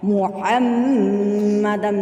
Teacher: میم متشدد بھی غنہ ہو گیا، اور دال دو زبر دن، یہ یہاں پہ تنوین ہے، تنوین بھی متشدد ہو گیا، میم متشدد بھی غنہ ہو گیا، تو اب یہاں پہ دونوں کے اوپر ہم غنہ کریں گے۔